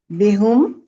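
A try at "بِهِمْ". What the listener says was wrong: بینا، اچھا جی، آپ نے کہا بی ہم، ٹھیک ہے۔ بہت اچھے طریقے سے اس بات کو ازبر کر لیں کہ یہ جو زیر ہے نا، بی کے نیچے زیر ہے، یہ چاہتی ہے کہ میرے بعد بھی زیر ہی پڑی جائے، ٹھیک ہے۔ زیر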